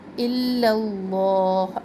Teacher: پہلے الا میں دونوں لام باریک ہوں گے، پھر اس میں جالہ میں دونوں لام موٹے ہوں گے، تو 4 لام ایٹ اے ٹائم ادا ہو رہے ہیں.